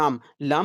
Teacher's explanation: अगर बोलेंगे लाम लाम दोनों तरफ से आवाजें निकल रही है आप महसूस करेंगे कि लाम की अदायगी में सांस की हवा जबान के दोनों जानिब से निकलती है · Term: पहलवी मुसम्मत